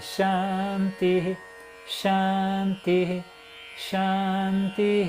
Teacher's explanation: Se você respirar entre um chant e outro, o I aparece.